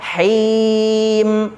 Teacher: mad arid lisukun, dibaca panjang selama 6 harokat. Mimnya izhar mutlaq.